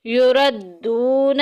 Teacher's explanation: واو ساکن پیچھے پیش واو مدہ کا قاعدہ جاری ہو رہا ہے ایک الف کے برابر لمبا کریں گے